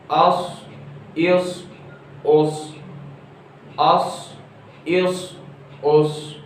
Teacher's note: میں موٹا پڑھ رہا ہوں لیکن آواز میری سیٹی کی آ رہی ہے